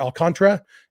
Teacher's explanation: I've been then running the last two syllables together